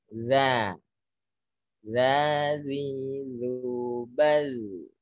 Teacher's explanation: Masih terlalu banyak nyentuhnya. Runcingkan lidahnya, runcingkan, sentuhkan dikit ke gigi atas, dibalik gigi atas.